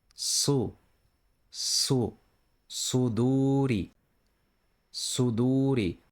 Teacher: This letter is like the English se, but heavier, deeper, and pronounced with a wider tongue. It's an emphatic se. You press the back of the tongue slightly down and make the sound thicker, like su, suduri, suduri.